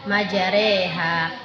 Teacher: memiringkan fathah ke kasrah atau memiringkan alif ke arah ya